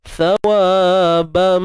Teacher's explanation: Tha ni kena keluar hujung lidah.